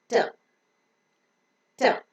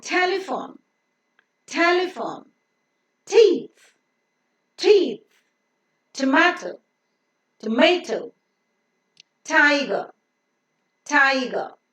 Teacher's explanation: The tip of the tongue should touch the teeth ridge and block the passage of air in the oral cavity. The air cannot pass through the nose as the soft palate is raised to shut off the nasal passage of air.